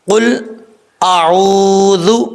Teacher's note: قاف حروف مستعلیٰ میں سے ہے، پر پڑھا جائے گا، اور اس کا مخرج ہے 2 نقطوں والا جو قاف ہوتا ہے، اس کا مخرج ہے زبان کی جڑ اوپر والے تالو کے نرم حصے سے لگے تو قاف پڑھا جاتا ہے، قاف قاف۔